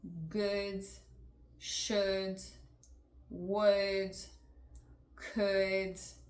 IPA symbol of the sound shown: ʊ